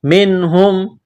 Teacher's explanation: نون ساکن کے بعد ہا ہے حروف حلقی ہے، یہاں پر غنہ نہیں کریں گے، اظہار کریں گے